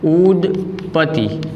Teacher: અહીંયા દ વર્ણ છે એ ઘોષ વ્યંજન છે, ત્યારબાદ આવતો પ વર્ણ છે એ અઘોષ છે, એટલે કે આપણે પ ને સરખાવીએ તો પ છે અઘોષમાં સ્થાન પામેલો છે.